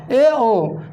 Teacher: इन स्वरों को पढ़ने से या इनका उच्चारण करने से हमारा मुख आधा बंद रहता है